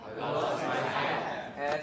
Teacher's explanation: So the prominence is hat, right?